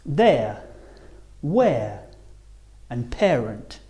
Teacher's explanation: Starting on the E and finishing on the uh air as in the words there, where and parent.